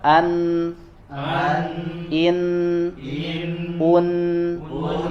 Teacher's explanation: mengalir suaranya dari hidung ya, dari rongga hidung atau al khayshum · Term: gunnah